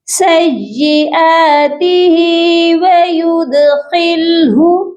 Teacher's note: دال حروف قلقلہ ہے، اس پر قلقلہ کریں گے، خا کو موٹا کریں گے